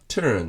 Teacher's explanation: 音は▁R▁だけど、母音と同じ役割をする音です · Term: 音節主音の▁R